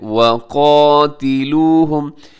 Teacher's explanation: اس میں واو پہ ہونٹ گول ہوتے ہیں اور قاف اپنے موٹا پڑھنا ہے، گرین کلر میں ہے، اور لمبا بھی کیجیے گا کیونکہ اس کے اوپر کھڑی زبر ہے۔